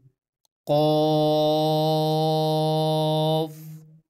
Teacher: जुबान की जड़ और तालू के नर्म हिस्से से अदा होता है